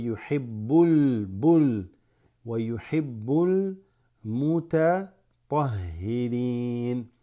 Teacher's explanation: you don't jump straight into the meme, because it's not huruf shamsiya, it is huruf qamariya